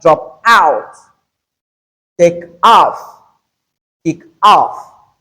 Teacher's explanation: Note that the stress must be on the second word which is the preposition.